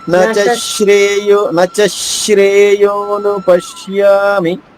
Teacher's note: మూడో చరణంలో నచ చ పైన ఆఘాత ఉంది కాబట్టి ష ఇంకా కొంచెం నొక్కు చెప్పచ్చు